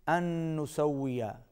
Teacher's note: نون پر غنہ ہوگا اور واو پر ہونٹ گول ہوں گے